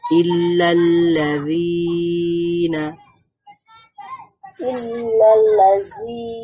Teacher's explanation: টান দিচ্ছি কেন কারণ কাসরার পরে একটা ইয়া সুকুন আছে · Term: হারফুল মাদ